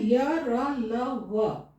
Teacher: ये अंतस्थ व्यंजन इसलिए कहा गया क्योंकि ये पूरा नहीं छू रहा है, उठ के जीभ उठ के छू रहा है और तुरंत हट जा रहा है।